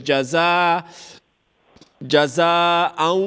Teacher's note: So the sound has to come from the nose and not the mouth. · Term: ghunna